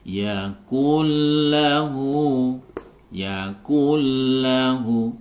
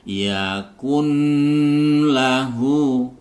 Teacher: memasukkan huruf nun ke dalam lam ini tanpa disertai dengan dengung itu itu gam bila ghunah yaaklahu yaaklahu jadi tanpa dengung langsung